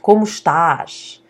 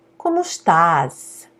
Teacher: So the accent is very different, specifically with the S, where in Portugal the S has the sh sound